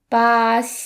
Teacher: the X sound is kind of similar to the English sh sound, except you put the tip of your tongue right against your front lower teeth